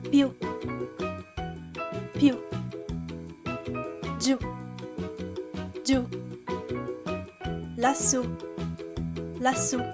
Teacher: If you see an accent on this vowel, just like the letters A, I, and O, pronounce the word stressing the U.